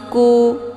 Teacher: Karena huruf nun dengan huruf kaf itu tempat keluarnya saling berjauhan, maka dinamakan dengan ab'ad. Cara bacanya, huruf nunnya disamarkan, kemudian siap-siap masuk ke huruf kaf. Ya, ku. Nah, hukum bacaan ikhfa ab'ad dibacanya sambil didengungkan.